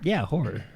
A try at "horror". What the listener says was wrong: You like slur it a little.